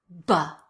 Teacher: You explode your lips, the air comes out, the sound is over.